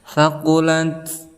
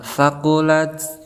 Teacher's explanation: ta ini termasuk huruf hamas, maka ada nafas yang keluar